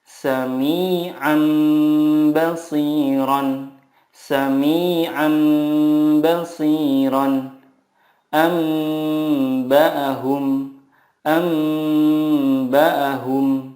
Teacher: mengganti nun sukun dengan mim sukun dan disertai guna 2-3 harokat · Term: iqlab